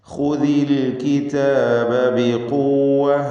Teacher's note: ഖാഇന് നിസ്ബിയായ തഫ്ഖീം കൊടുക്കുക, അതിന് ദമ്മ വന്നതുകൊണ്ട് ഇസ്തിഅലാഇൻ്റെ അക്ഷരമാണ്.